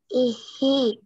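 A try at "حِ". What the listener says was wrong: Ihi. Nah, lebih tebal, tebal. H-nya tebal. Ihi.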